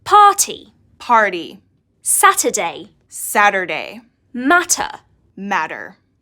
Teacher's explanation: it sounds like a T in British English. But in American English, it sounds a bit more like a D.